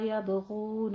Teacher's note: غین کو آپ نے ادنا حلق سے پر آواز نکالنی ہے